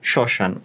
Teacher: সাধারণত শব্দের শুরুতে মফলা থাকলে তা উচ্চারিত হয় না অথবা অনুচ্চারিত থাকে